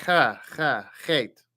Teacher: But the chet is very hard. Like the air has nowhere to go.